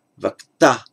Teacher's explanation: In Vedic, the final a was a short a, but stressed, so vakta, stressed or pronounced in a higher tone, not vakta, but vakta.